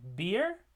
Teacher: We have the b in beer, which is a voiced stop.